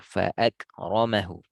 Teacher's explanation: mengalir angin pada kaf, namun tidak mengalir suara.